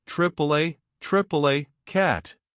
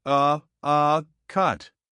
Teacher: For cat, your mouth opens wider and your jaw drops noticeably with your tongue low and forward. For cut, your mouth barely opens. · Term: short a